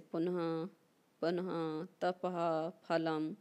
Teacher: विसर्ग का भेद उपधानीय, जब विसर्ग के बाद पा फा वर्ण रहते हैं तब अर्ध विसर्ग उच्चारण होता है।